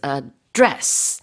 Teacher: the stress of this word as a verb is on the second syllable